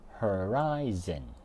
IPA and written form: həˈraɪ.zən (Horizon)